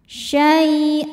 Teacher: Syai ada harfulin karena ada ya sukun sebelumnya fathah. Cara bacanya cukup dilembutkan atau dilunakkan.